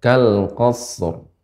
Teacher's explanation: Dia agak lebih karena shad bukan huruf qalqalah yang bisa dipantulkan, maka shad kita baca kal qas, kemudian berikan ra yang tebal kal qasr.